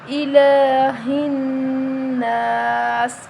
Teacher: لام کے اوپر کھڑی زبر ہے تو ہم اس کو 1 الف کے برابر لمبا کر کے پڑھیں گے۔ ہا کو موٹا پڑھیں گے، نون مشدد ہے، اس پر غنہ کریں گے۔